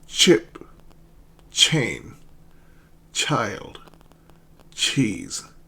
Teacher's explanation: Touch your vocal cord with your index finger and say ch. The throat doesn't vibrate. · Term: voiceless consonant